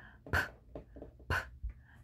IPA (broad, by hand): p p